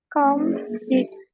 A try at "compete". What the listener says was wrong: Yeah, this E is long, please. So compete.